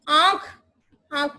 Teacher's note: अनुनासिक, अनुनासिक जिसमें नाक और मुंह दोनों से हवा आती है। तो ये होता है आपका शिरोरेखा के ऊपर जो ये है अनुनासिक, जिसमें नाक और मुंह दोनों से हवा आती है।